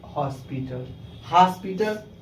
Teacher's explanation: इसका जो उच्चारण स्थान देखा जाए तो आ और ओ के बीच में